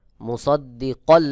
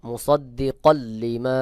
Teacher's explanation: তানভীনের পরে ইদগামের হরফ লাম চলে আসছে এখানে গুন্না ছাড়া মিলায় পড়তে হবে